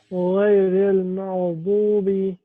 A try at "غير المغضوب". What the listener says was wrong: غير المغضوب. Give the ghain more time.